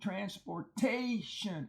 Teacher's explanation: the A there is a long A in front of the tion, transportation, and it's an open syllable, which explains why it's long.